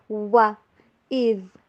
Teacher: ذال کو ادا کرتے ہوئے زبان کی نو کو اوپر والے جو سامنے والے دو دانت ہوتے ہیں اس سے باہر رکھتے ہیں